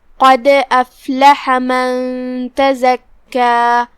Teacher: آخری میں مد طبیعی ہے تو ہم 2 حرف کے برابر اپنی آواز لمبی کریں گے